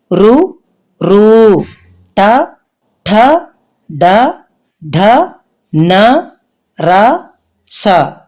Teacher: తర్వాత మూర్ధన్యాలు మూర్ధన్యం అనగా మూర్ధస్థానం అంటే శిరస్సు శిరస్సు నుండి పుట్టే అక్షరాలు మూర్ధన్యాలు ఇవి ఋ ఋ ట ఠ డ డ న ర స వీటిని మూర్ధన్యాలు అని అంటారు.